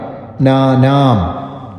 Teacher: ഇവിടെയുള്ള ന വർസ്യമായിട്ടുള്ള നയാണ് നാനാം നാനാം അല്ല നാനാം കുലഘനാനാം അതുപോലെ ദോഷൈ ആഷൈ എന്നുള്ള അക്ഷരം ദീർഘാക്ഷരമാണ്